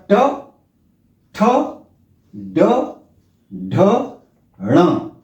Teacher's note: मूर्धा से जीव लग कर के इनका उच्चारण होता है इसलिए इन ट वर्ग का उच्चारण स्थान है मूर्धन्य · ट वर्ग का उच्चारण स्थान है मूर्धा और जीव यानी जीव स्पर्श करती है मूर्धा को · जीभ मूर्धा से को स्पर्श करती है और झटके से पीछे हटती है · ट वर्ग का उच्चारण स्थान है मूर्धा और जीभ, यानी जीभ स्पर्श करती है मूर्धा को। जैसे च वर्ग में तालु को स्पर्श करती थी, इसमें मूर्धा को यानी तालु से थोड़ा सा और ऊपर की तरफ स्पर्श करती है, तब इनका उच्चारण होता है। · की तरफ स्पर्श करती है तब इनका उच्चारण होता है और जीव स्पर्श करके एक चटकारे के साथ में यानी झटका से हटती है तब इनका टवर्क का उच्चारण होता है तो देखे इसका उच्चारण